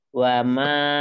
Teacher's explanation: Ingat di mimnya wama jangan panjang, dua harokat saja.